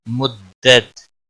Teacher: ضاد حروف مستعلیہ میں سے ہے، پر پڑا جائے گا۔ مدت تشدید والے حرف کو تھوڑا سختی کے ساتھ پڑھتے ہیں تاکہ تشدید ظاہر ہو